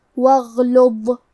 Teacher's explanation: غین کی ادائیگی حلق کے اوپر والے حصے سے ہے. کیونکہ غین حروف التفخیم میں سے ہے تو ہم یہ حرف کو بھاری آواز میں پڑھیں گے اور کیونکہ یہاں غین ساکن ہے تو ہمیں غین کو ظاہر کرنا ہے.